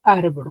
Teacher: la mayor fuerza de voz en la sílaba ar